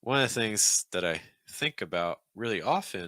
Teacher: you're stressing one and then you're stressing think and then you're stressing often